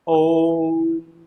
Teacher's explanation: प्लुत स्वर के उच्चारण करने में अधिक समय लगता है दीर्घ स्वरों से भी ज्यादा